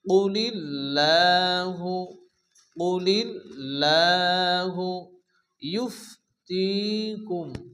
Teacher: আল্লাহ শব্দের শুরুতে জের আসলে আল্লাহর লামকে বারিক অর্থাৎ লা উচ্চারণ করে পড়তে হয়। এছাড়া লামের উপরে খারাজ জবর আসছে, এজন্য এক আলিফ টেনে পড়তে হবে।